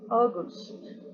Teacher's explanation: La segunda U casi no suena, suprimida.